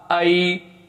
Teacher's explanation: یہاں پہ یا لین ہے تو اس کو زیادہ لمبا نہیں کریں گے